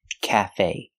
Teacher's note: both syllables it's not Cafe and it's not Cafe it's CA stress both syllables equally